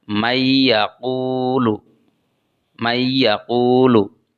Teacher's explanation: maka nunnya diirghamkan atau dimasukkan ke dalam huruf ya